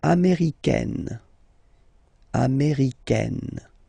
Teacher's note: it's really open, this A-I, américaine